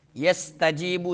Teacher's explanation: سین میں سیٹی نکالیں گے، جیم شدیدہ حروف میں سے.